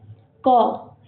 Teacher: जैसे क का हम उच्चारण करेंगे उसके साथ खुद ब खुद अ खुला आएगा। बिना अ का उच्चारण किए हम क के साथ अ उसका व्यंजन का उच्चारण नहीं कर सकते हैं।